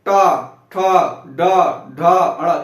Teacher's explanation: जीवा कहां टच हो रही है, दांत के पीछे और तालु के बाद बीच में। तो ये क्या हो जाएगा, मूर्धा। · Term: मूर्धन्य